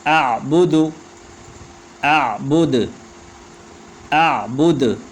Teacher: آخر میں دال ساکن ہو جائے گا تو پھر قلقلہ ہوگا